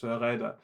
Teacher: we have inherited the uh the german or french r sound which means that uh in my dialect it's raider